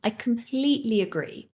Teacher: notice how we stress the word completely to emphasize our agreement